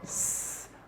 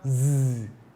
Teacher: One is voiced, the other is voiceless. The sound S is voiceless, and the sound Z is voiced. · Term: alveolar fricatives